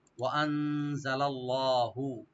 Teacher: যাব, মিন শাই। ওয়া আনজালাল্লাহু, ওয়া ওপেন রাখবেন, হামজা ওপেন রাখবেন, নুন সাকিন এখানে একফা করব , লাম এখানে ওপেন রেখে লফজ জালালা ডি পুরি পড়ব। ওয়া